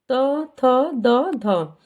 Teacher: दांतों के मूल से दांतों को स्पर्श करती है हमारी जीभ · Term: दंत्य